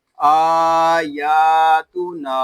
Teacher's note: یہاں نون کو بھی ہم ایک الف تک کھینچ کر پڑھیں گے کیونکہ یہاں الف مدہ ہو رہا ہے